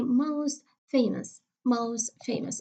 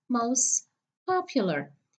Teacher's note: Again, the T in the middle will be elided.